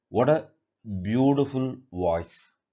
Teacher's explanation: whenever a sentence ends with exclamation mark so naturally that takes falling intonation